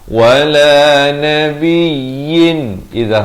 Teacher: Wala nabiyyin idza halqi, jangan dengung, jangan panjang, sempurna saja yin terus masuk